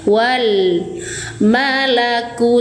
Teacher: Baca jelas lam sukunnya. [musik] Serta ditunaikan sifat tawasnya yaitu mengalir sedang. Alirkan sedang suara lam.